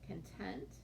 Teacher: Often it has to do with where we put the emphasis or stress of our word. Content, the emphasis is on the first part, the first syllable.